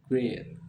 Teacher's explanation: ee-nya dibaca jadi satu bunyi panjang